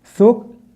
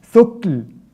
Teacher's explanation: There's a breath of air, very small breath of air that's coming out after the kaf itself. Without it, you say something like thukl. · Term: hams